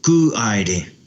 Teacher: They don't say the A, ku aire.